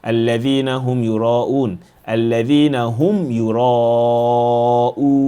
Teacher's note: the mim is pronounced, the connection between the mim and the ya is smooth. All right, so we don't merge it.